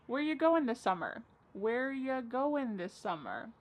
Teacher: Where ya, which is you, going, dropping the G.